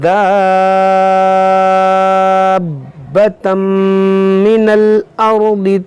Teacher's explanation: یہاں پر مد لازم ہے. الف مدہ کے بعد با پر جو ہے یہ سکون اصلی ہے، تو اسی مد کو سب سے زیادہ کھینچتے ہیں، یعنی اس کو آپ 5 الف کے برابر کھینچ کر پڑھیں